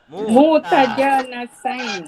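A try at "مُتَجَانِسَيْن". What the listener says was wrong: Bukan jana, jani. Mutajanisain, jenis. Mutajanisaini.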